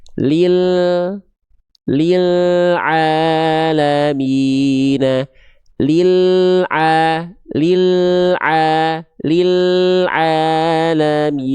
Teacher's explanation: Inhiraf itu maksudnya penyimpangan makhraj. Jadi, ketika kita melafalkan huruf lam itu ketika nempel ke langit-langit bagian depan, dia agak disimpangkan ke kanan atau ke kiri, khususnya ketika sukun